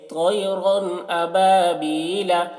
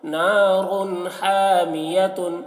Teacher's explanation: تنوین یا نون ساکن کے بعد حروف حلقی آئے تو نون کو ظاہر کر کے بلا غنہ کے جلد پڑھیں گے، اس کو اظہار کہتے ہیں۔